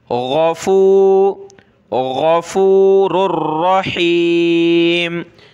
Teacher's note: ये रा दोनों आपस में मिलेंगे, रा रा, दो पेश रुर, रा ज़बर रा, रुर रा, इस रा को सख्त करना है तशदीद की वजह से, मोटा भी करना है इन दोनों को, और गईन को भी मोटा करना है, गले से निकालना है गईन